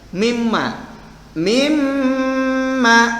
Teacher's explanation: jadi dengungnya gitu harus terasa karena rongga hidung kita harus terang terasa dengungnya itu melalui rongga hidung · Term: ghunnah